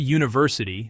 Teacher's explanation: The word university starts with the letter U, but the sound is Jew, a consonant sound, so we must use a.